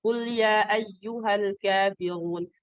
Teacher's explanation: Jadi mad jaiznya dibaca dua harakat.